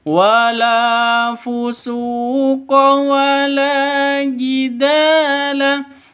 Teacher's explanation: Wala panjang dua ketukan. Karena ada alif alif diawali dengan fathah atau alif sebelumnya fat fathah ya. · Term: mad asli